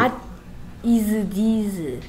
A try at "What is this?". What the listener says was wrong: What is this? 무슨 these야, these는. 얘 these고 얘는 this고요. 뭔 네, 발음 구분이 그렇게 안 됩니까?